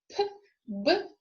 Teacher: bilabial plosives, meaning that both lips are involved in the pronunciation